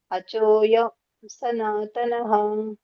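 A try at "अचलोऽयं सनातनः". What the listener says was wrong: ಯಾಕೆ ಅರ್ಧ ಓದ್ತಾ ಇದ್ದೀರಾ ಅಚಲೋಯಂ ಅಂತ ಇದೆಯಲ್ಲ ಪೂರ್ಣ ನೋಡಿ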